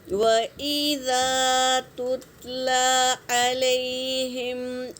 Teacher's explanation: اذا میں الف سے پہلے زبر، الف مدہ، ایک الف کے مقدار کھینچیں گے، اور تا پر سکون ہے تو پہلے والے حرف سے ملا کے پڑھیں گے۔